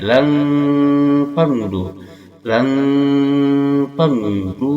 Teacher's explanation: Lang di sini ada nun mati bertemu fa, hukumnya ikhfa awsat. Ikhfa awsat, pertengahan antara bunyi n dan eng, sehingga kesamaran dan dengungannya seimbang.